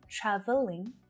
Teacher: you'll hear traveling with that extra schwa sound in the middle